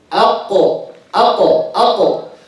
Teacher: the qaf is shadid, the sound is cut, so they need to release it, to bounce it. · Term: qalqala